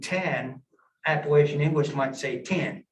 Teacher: you look at phonological for example we sample a vowel sound standard english you have the epsilon e uh it can shift to the capital i it'll shift so instead of saying 10 appalachian english might say